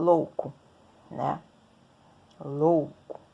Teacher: eu tenho uma vogal e uma semivogal na mesma sílaba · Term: ditongo